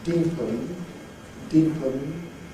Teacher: p is at the beginning of a syllable which is not stress and that is therefore not going to be such strong aspiration